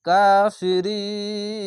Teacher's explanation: এখানে কাফ না আছে এখানে আয়াত আছে থামতে হবে তার জন্য শেষ অক্ষরে সাকিন দিয়ে তিন আলিফ পড়বেন মাধ্যে আরজি হবে